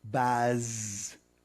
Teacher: when you say baz, the jaw lowers, the tongue has to get to the roof of the mouth, to the palate, to produce we call that the alveolar plate, to produce the fricative sound for z, baz.